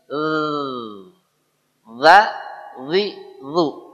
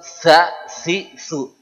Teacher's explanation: zal ujung lidah kena ujung gigi seri atas bergetar. Za zi zu bukan za si su.